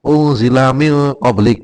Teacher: yang semula nun mati n menjadi berdengung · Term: ikfa